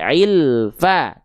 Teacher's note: Jadi jangan sampai lam sukunya memantul, jangan sampai lam sukunya terputus